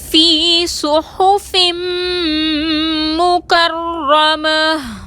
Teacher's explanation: مکرمہ میں را مشدد پر زبر ہے، را کو موٹا پڑھیں گے، را مشدد کو مضبوطی اور دباؤ کے ساتھ ادا کریں گے، گول تا کو وقف کی صورت میں ہائے ساکنہ سے بدل دیں گے۔